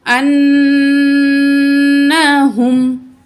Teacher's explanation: انہم، کچھ بہن بھائی سمجھتے ہیں کہ غنہ کرنا نون کو کھینچنا ہے، کھینچنا نہیں ہے، نون کی آواز کو ناک میں لے جا کر ٹھہرانا ہے